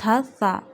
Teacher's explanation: we read it from the tip of the tongue touching the inner edges of top two front teeth read it very softly